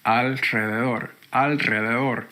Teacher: I had to say alredor and really force air out of my mouth after the L